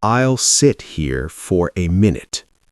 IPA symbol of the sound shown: ɪ